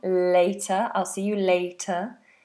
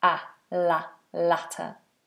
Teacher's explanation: One has a diphthong, later, I'll see you later, and latter is a short vowel, ah, la, latter.